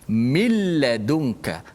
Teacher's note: Suara nun dah tak ada pada bacaan. Dia hanya ada pada tulisan sahaja. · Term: idgham bila gunnah